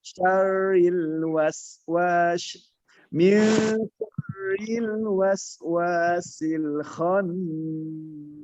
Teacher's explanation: pengucapan ketika kita talaki min syarri tipis, syar tebal, ri-nya tipis.